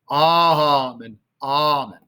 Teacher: a lot less emphasis on the second half of the word amen